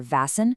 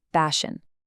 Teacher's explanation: It is a total structural collapse because the speaker lacks the lip rounding for the W, turning it into a V or B, and simultaneously degrades the sh into an S while also completely dropping the middle and final syllables. The word Washington basically ceases to exist.